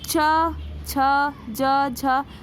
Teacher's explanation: तालू पे। जिह्वा उठ के तालू को टच कर रही है